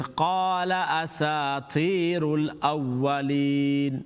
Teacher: Then qala, don't make the lam long, and asati, the ta is going to be long because it's got a ya madda. So it's qala asatirul awwalin.